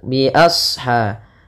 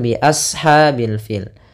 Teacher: huruf Shad yang ditandai dengan warna apa namanya warna biru ini shadnya dibaca kita tebal